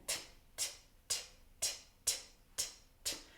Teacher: I'm placing my tongue at the back of my teeth, but slightly up, so where the teeth and the gums are kind of meeting. That point, block the passage of air and then pull back and T, T, T, T, T, T, T. · That point, block the passage of air and then pull back and T, T, T, T, T, T, T. Get that nice clear T sound first. No voice.